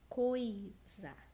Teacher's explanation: Nós começamos com um O forte e depois um I fraco. Ou seja, nesse caso, a letrinha I assume o papel de semivogal e, portanto, eles não são separados, formando um ditongo.